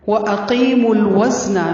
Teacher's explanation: میم کو لام کے ساتھ ملائیں گے. مل وزن واو پر منہ کو گول کرنا ہے، زا کی آواز میں شدت ہوگی، نون کو لمبا نہیں کرنا.